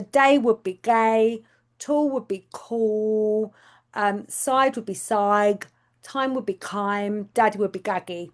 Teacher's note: it's where T and D come out as a C and a G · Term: backing